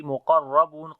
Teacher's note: On the lam again we make tawassut quality muqarrabun. Qaf and ra we read in heavy sound and ba we long due to waw madda